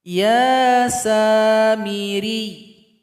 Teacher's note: Ini sama cara bacanya dengan ayat 85 dan 87. Ya yang bertasdid di akhir ayat seperti ini disukunkan, kemudian huruf ra yang berada sebelumnya ditekan ke huruf ya. Ya samiri ditekan atau ditasdidkan.